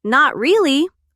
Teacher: And if you say, "Not really," with a rising tone, like a question, it sounds confused, like you're not sure.